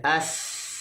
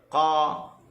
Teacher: Yang kita dengar, yang kita rasa ni, as, ada angin keluar. Ini adalah huruf hams. Lawan dia huruf yang disebut tidak berangin.